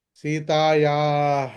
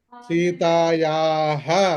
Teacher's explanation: విసర్గ వచ్చినప్పుడు హకారం పలకాల్సిందే